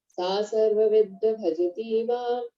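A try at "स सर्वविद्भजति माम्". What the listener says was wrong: सर्व, ये आ मत करो बच्चों, आ नहीं है। सर्वविद भजती माम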